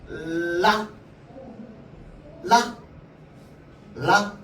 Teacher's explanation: 혀 끝이 윗잇몸에 붙었다가 통 튕겨져요. 라 알겠죠? 이 혀 끝을 잇몸에 가볍게 대었다가 뗀다고요. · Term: 초성 소리